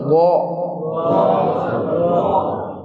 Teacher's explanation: زبان کا جو بغلی کنارہ ہے، ایک طرف کا، ایک سائیڈ کا بغلی کنارہ کہتے ہیں، ایک سائیڈ کا، وہ داڑھوں کی جڑوں کے اوپر جب لگے گا تو پھر ضاد ادا ہوگا · ضاد زبر ضا، بہت سختی نہیں پڑی، اس میں رخاوت، استعلا نرمی والی صفت، اور استعلا موٹائی والی، اور اطباق زبان کا چمٹنا، زبان کا اپنے مخرج سے چمٹ جانا